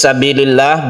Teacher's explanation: lafadz Allah dibaca tarqiq maksudnya karena sebelumnya ada kasrah